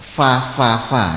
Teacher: gigi yang ke-15 bibir bagian dalam mengenai ujung gigi depan atas bibir bawah bagian dalam mengenai ujung gigi depan atas